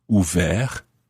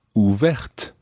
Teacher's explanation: ouvert ends in a T, which is silent. Ouverte ends in the TE, making the T pronounced.